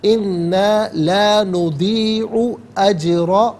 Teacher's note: را پر زبر ہے، را کو پر کر کے پڑھیں گے، جیم ساکن ہے لیکن حرف قلقلہ ہے تو آواز لوٹتی بھی محسوس ہونی چاہیے، اجرا نہیں اجرا۔